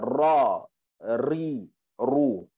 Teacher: kita sebut ra ni makhraj dia pada hujung lidah jumpa langit-langit atas.